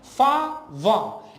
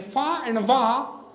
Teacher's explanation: In fa and va, my lower lip goes up and it touches my upper two teeth.